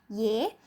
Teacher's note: huruf ya dengan harokat sukun, maka di sini a-nya hilang, tinggal huruf y aja ya.